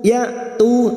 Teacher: hamzah sukun jangan samakan dengan ain. Hamzah sifatnya syiddah.